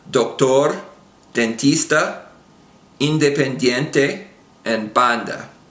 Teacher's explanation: At the beginning of the word, it's basically the same as the English D, but again, it's a little bit softer. It's not quite as explosive.